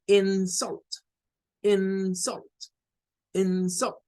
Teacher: Cuando es un nombre, hay un intercambio y resulta ser que la sílaba stress o con acento es la primera y la weak o la débil es la segunda. Es decir, aquí vamos de una fuerza de voz acá a decaer a una con menos fuerza